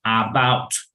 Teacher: Es como una E, pero baja. Exacto, es una E que se pronuncia quedito, ¿vale? Se llama schwa, ese fonema.